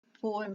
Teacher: The first syllable po escapes the mouth with emphasis, whereas the second syllable m escapes the mouth rather quickly. In other words, poem is a stressed, unstressed word.